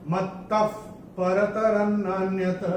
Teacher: पहले चरण में ये त के बाद जो विसर्ग आ रहा है उसके बाद का अक्षर है प, और विसर्ग के बाद प या फ आता है तो विसर्ग का उच्चारण होता है फ।